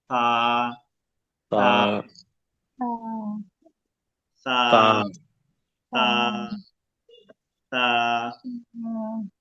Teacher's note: তার মানে হলো খুবই পাতলা হবে, এবং এটা হলো জিহ্বার আগা, উপরের 2 দাঁতের আগা। 2 দাঁতের আগার সঙ্গে লাগে বাতাস একেবারেই কম, থাকবে বা থাকবে না।